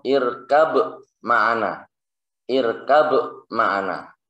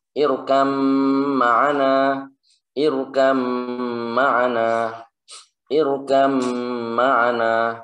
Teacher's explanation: ba-nya tidak dianggap. Sudah seakan-akan tidak ada, langsung masuk ke huruf mim. Jadi bacanya adalah irkam ma'ana. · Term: idgham